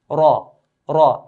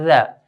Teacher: When Ra has a fatha, we pronounce Ra in a heavy way.